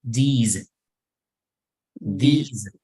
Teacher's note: la S, aunque hay una S, en realidad pronunciamos como Z.